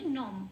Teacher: অনুস্বরটা ময় হসন্ত হিসেবে প্রতিস্থাপিত হয়ে গেলে ওটা উচ্চারিত হবে নম বলে। নং নয়, নম।